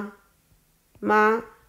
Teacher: 第一个妈呢是第一声，妈拉的比较长一些。